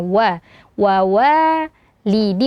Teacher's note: Wa walidi, wa di sini ada 2 huruf waw, makhraj waw adalah di 2 bibir yang dimonyongkan